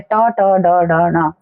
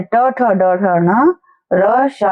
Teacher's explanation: इसके बाद होते हैं मूर्धन्य वर्ण, जहां पर हमारे मुंह के अंदर मूर्धा जो जगह होती है वहां पर टकराते हैं, इनको कहते हैं ट, ट, ड, ढ, न। जिस जगह को ट, ठ, ड, ढ, न बोलते टाइम हमारी जीभ टकरा रही होती है उसको मूर्धा कहते हैं